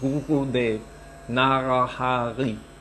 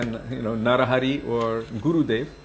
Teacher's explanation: If you go to Germany, the pronunciation is different for Gurudev because of the R. It's a different R. It's a Guru, it's in the back of the throat.